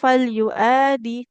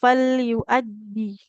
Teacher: hamzahnya enggak panjang cuman dal bertasydid di depan ya. Maka jangan lupa untuk menekan huruf dalnya.